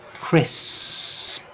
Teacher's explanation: Lots of learners have trouble pronouncing the word crisps, and the secret is to make the first S sound really long